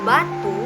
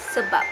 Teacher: Bunyi akhirnya itu tidak dilepaskan, maka maknanya tetap sama.